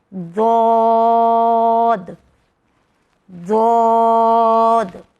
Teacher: یہ واحد ایک لیٹر ہے جس کا مخرج سب سے الگ ہے، جو زبان کے کناروں کو اوپر کے دانتوں کے دہاڑوں پہ ٹچ کر کے لگتا ہے۔